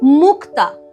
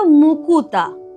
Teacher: এই যে যুক্ত ব্যঞ্জনটা ছিল ক ত, সেই যুক্ত ব্যঞ্জনের মাঝখানে একটা উ এসে ঢুকেছে। তাহলে এই যে স্বরধ্বনি আসবার ফলে যুক্ত ব্যঞ্জনটা ভেঙে গেছে, তাদের মধ্যে একটা দূরত্ব তৈরি হয়ে গেছে। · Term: স্বরভক্তি